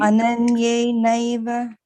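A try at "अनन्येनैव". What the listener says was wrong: Yeah, you see, all the time you were pronouncing this as ananne. This is not ne, this is why. That's why I've broken it up to be very clear.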